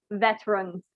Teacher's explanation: So one is the V, which I think because of how Indonesian is pronounced, it's sometimes you guys pronounce it like an F, but in English it's more like a V